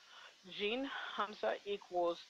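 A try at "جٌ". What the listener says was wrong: No Hamza. No Hamza.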